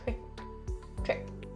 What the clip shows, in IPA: trɪk